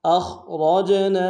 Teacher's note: حمزہ کو خا کے ساتھ ملانا ہے، خا میں آواز زیادہ رہے گی، خا کو موٹا بھی ادا کریں گے ، را کو موٹا ادا کرتے ہوئے جیم کے ساتھ ملانا · را کو موٹا ادا کرتے ہوئے جیم کے ساتھ ملانا ہے، جیم حروف قلقلہ میں سے ہے، قلقلہ کریں گے ، اور نون کے ساتھ الف مدہ ہے، ایک الف مقدار